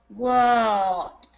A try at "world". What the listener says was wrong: Good. Good, I like it.